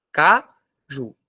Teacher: Qual é a sílaba tônica de caju? Ju, que é a mais forte. Se a sílaba tônica está em último, a palavra é uma oxítona.